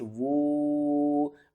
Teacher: अलिफ को छोड़ देना है, वाओ को हमने पढ़ना है वाओ मद उल्टा पेश वू, मद्दे मुनफसिल है तो हम क्या करेंगे? तीन अलिफ के बराबर खींच कर पढ़ेंगे।